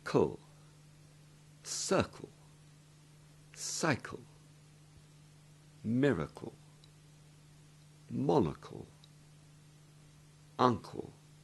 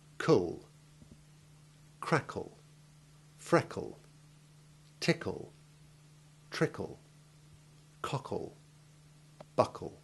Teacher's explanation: After making the hard C sound, you simply flick the tip of your tongue rapidly forward and upwards to hit the back of your top front teeth. Drop it again, and that does it all. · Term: CLE word ending